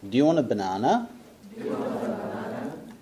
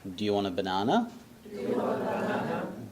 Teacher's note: And the voice goes up.